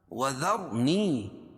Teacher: را ساکن رائے ساکنہ سے پہلے زبر یا پیش ہو تو را کو پر پڑھیں گے. نی یا مدہ یا ساکن سے پہلے زیر ہے.